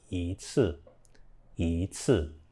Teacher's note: So again, it's not 一次. It's not the first tone. It changes to a second tone now.